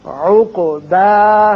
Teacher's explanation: عین اچھی طرح ادا کیجئے اور قاف کی صفت قلقلہ